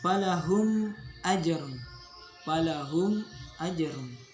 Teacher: bunyi mim disuarakan dengan terang dan jelas tanpa berdengung di bibir dengan mulut tertutup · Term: izhar syafawi